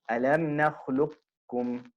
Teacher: The qaf is pronounced with isti'la, but the sifa of qalqala is eliminated, and this is an incomplete idgham